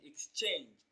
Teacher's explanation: Option C, exchange. The stress falls on the second syllable, change, exchange. It is pronounced louder and longer.